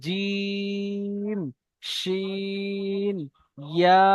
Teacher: জিভের মাঝখান এবং তার বরাবর উপরের তালুর সাথে লাগিয়ে উচ্চারিত হয় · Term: 6 নম্বর মাখরাজ